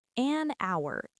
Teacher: That's because the H is silent. The word starts with an ow sound, which is a vowel sound, so we use an.